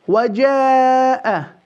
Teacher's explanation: This mad we will extend four as well, compulsory, because the letter of hamza follows the mad in one word.